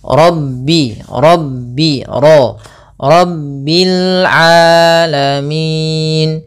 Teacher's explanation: pada lafal ro ini juga tebal yaitu ra tafkhim kita baca dengan bacaan tafhin rabbio Rabbil alamin.